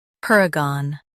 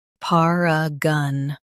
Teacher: par uh gun paragon par uh gun paragon US stresses per, UK par. Gon is soft.